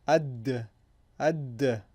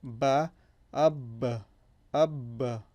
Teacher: if there is a sukoon on the ba, that means that there will be a qalqala sound, or vibrating sound